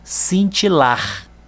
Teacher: a última sílaba é que eu vou falar com mais intensidade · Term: sílaba tônica